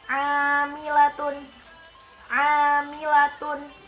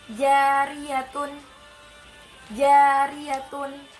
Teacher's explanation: Ketika kita ingin mengucapkan huruf lam, makhrajnya miring ke depan. Sedangkan ketika kita ingin mengucapkan huruf ro, makhrajnya miring ke belakang atau tepatnya di punggung lidah.